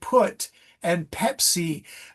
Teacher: Pepsi has no pip. It's a voiceless P. It's bilabial. It's plosive, but there's almost no voice to it.